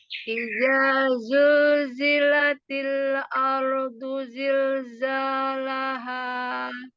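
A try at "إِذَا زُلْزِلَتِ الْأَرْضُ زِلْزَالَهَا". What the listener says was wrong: Nah, itu jangan naik-naik semuanya. Idza zulzilatil ardu zilzalaha. Jadi semua tipis. Caranya gimana? Caranya turunkan lidahnya.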